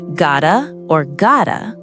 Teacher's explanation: with a soft t sound that almost sounds like duh